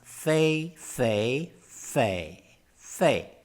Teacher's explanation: the tone i used it to pronounce Faye is the so-called half 3rd tone it is one of the two variations of the third tone